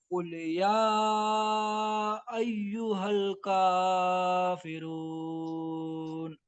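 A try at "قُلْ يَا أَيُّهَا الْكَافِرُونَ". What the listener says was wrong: इसको भूल से भी कभी कुल नहीं पढ़ेंगे, छोटा काफ से। छोटा काफ से कुल पढ़ेंगे ना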